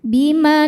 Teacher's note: Maka cara baca huruf lamnya dipanjangkan boleh dua, boleh empat, ataupun enam harakat. Asal harus sama atau konsisten dalam sekali duduk.